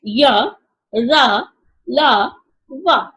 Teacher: इन व्यंजनों के उच्चारण के समय जीवा मुख के किसी भाग को पूर्णतः स्पर्श नहीं करती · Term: अंतस्थ